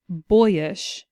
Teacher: we slide from o to e to I